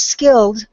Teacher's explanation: The word skilled, we lost the D at the end. I know that's a difficult one because we have the L sound and the D sound, but it's not really broken up by a vowel. · I know that's a difficult one because we have the L sound and the D sound, but it's not really broken up by a vowel. Even though the vowel is printed there, we don't pronounce it typically when we have a past tense word. So it's skilled, and I know that can be difficult because it's combination consonants plus it's at the end of the word.